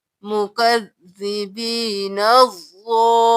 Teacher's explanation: اب دیکھ لیجیے، مکذبین الضالین، نون زبر ضاد نز، اب یہاں پر ہم نون کو ضاد کے ساتھ ملائیں گے، پھر ضاد زبر الف مد لام ضال، مکذبین الضال، لام زریہ لی، ضالی، نون زبرنا ضالین، زالین بھی نہیں کریں گے، زالین بھی نہیں کریں گے، ضالین۔